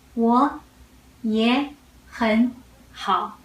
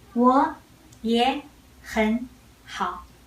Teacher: you will read all the front third tone as second tone. Only the last one is third tone.